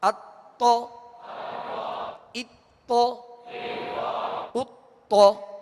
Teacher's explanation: اب اس میں پہلے حمزہ ہے، حمزہ باریک پڑھیں گے اور تو کو پر پڑھیں گے، اتو، مگر ہونٹوں کو گول نہیں کریں گے۔ پیش جب پڑھیں گے تو وہ پیش کی وجہ سے گول ہوں گے